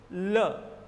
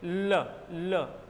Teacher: जीवा के दोनों किनारे ऊपर के दांतों पर चिपक चुके हैं और हवा नीचे से निकल चुकी है और ल का उच्चारण हो रहा है। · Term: पार्श्विक व्यंजन